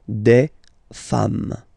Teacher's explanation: Femme, you write it like it was at the singular form, and then you just add this S at the end, and as we said, you don't pronounce it